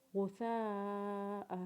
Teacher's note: اور پھر حمزہ کے اوپر تنوین پڑھتے ہوئے حمزہ کے اوپر غنہ کریں گے اور وقف کے بعد حمزہ کو 1 الف کے برابر کھینچیں گے